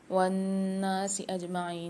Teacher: نون پر مشدد ہے، غنہ کر کے پڑھیں گے، عین کے ساتھ یا ساکن ہے، اس کو بھی ایک الف مقدار کھینچ کے پڑھیں گے۔